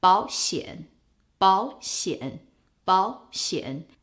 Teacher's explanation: you change the first third tone character into a second tone character, and that will make your life much easier.